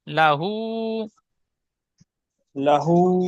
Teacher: হার উপরে উল্টা পেশ আছে, উল্টা পেশ অ মাদ্দার সমতুল্য, সুতরাং অ মাদ্দার মতো এক আলিফ পরিমাণ টান দিয়ে পড়তে হয়।